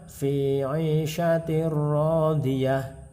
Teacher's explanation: Tentu kita ingat bahwa ra adalah salah satu huruf idgham bila gunah, sehingga ketika ada tanwin bertemu dengan huruf ra, maka hukum bacaannya adalah idgham bila gunah, artinya dimasukkan tanpa mendengung, sehingga tanwin tidak terbaca namun dimasukkan ke dalam ra, dan ra ini kemudian ditasydid dan dibaca tanpa mendengung